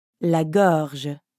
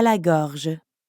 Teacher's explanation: we have that french r followed by the j sound